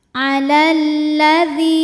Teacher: Lam pertama sukun, lam kedua berharokat fathah. Lam yang sukun tidak dibaca, jadi kita langsung baca masuk ke lam kedua. Alalladzi. Dzi hukumnya adalah mad tabi'i zahiri. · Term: alif lam syamsiyah